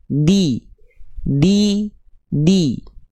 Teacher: sempurnanya harakat kasrah itu dengan cara direndahkan rahang bawah kita di lalu diangkat bagian tengah lidah kita. Jadi ketika momentum vokal i-nya dilafalkan, tengah lidahnya naik ke atas.